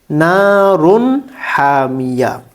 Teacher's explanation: اگر تنوین اور نون ساکن کے بعد ان حروف میں سے کوئی حرف آئے تو اس تنوین اور نون ساکن کو اظہار کریں گے، یعنی اس کو واضح طور پر صاف صاف پڑھیں گے